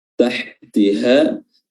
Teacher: ha yang kedua yang berharakat fathah itu makhrajnya adalah aqsal halq, tenggorokan bagian bawah. Jadi berbeda ya, ha yang pertama dengan ha yang kedua.